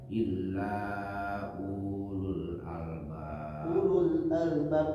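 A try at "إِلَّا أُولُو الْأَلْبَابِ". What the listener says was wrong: U-nya di situ tidak panjang, Pak.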